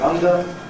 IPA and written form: ˈʌndə (under)